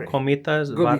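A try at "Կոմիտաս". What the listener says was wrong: Gomidas. music is just Komidas. It's not with a K. It can be either K or G, depending. Russian Armenians make it Komidas with a K. Komidas. Yeah, but it actually should be G.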